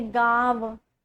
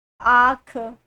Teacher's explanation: तो यहाँ पर आपका जो चंद्र बिंदु है उसे क्या बोलते हैं, अनुनासिक बोलते हैं, उसका उच्चारण उच्चारण स्थान नाक और मुख दोनों से होता है